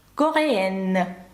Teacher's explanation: Бачите, через подвійну «н» у нас випадає носовий звук.